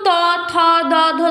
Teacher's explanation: এগুলো দেখো আমাদের দাঁতের সঙ্গে স্পর্শ হচ্ছে, যার জন্য এগুলো দন্তধ্বনি